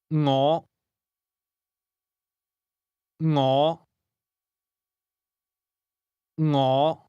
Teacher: This word begins with a soft ng sound, something like the end of the English word singing.